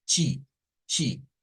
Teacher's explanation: en el portugués de Brasil siempre vamos a encontrar esa situación en donde las cosas que terminan en TE, la T se vuelve una CH y una I